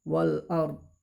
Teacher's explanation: Alnya itu jelas, izhar qamariyah atau al qamariyah